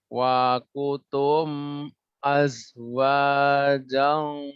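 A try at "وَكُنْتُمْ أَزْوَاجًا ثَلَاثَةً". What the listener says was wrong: Di sini ada nun mati. Bukan wakutum. Ada nun mati bertemu tak ikhfa.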